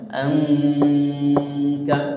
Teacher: Jadi sabar ya, pelan-pelan ya. Angka ya, angka samar-samar gunnah, ditahan di hidung ya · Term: ikhfa hakiki